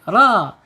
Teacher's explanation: Usar rnya harus dibaca tebal karena dia mempunyai makhraj allisan. ujung tepi lidah menyentuh langit-langit yang depan mendekati pangkal gigi seri